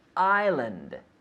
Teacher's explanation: there is an S but we don't pronounce it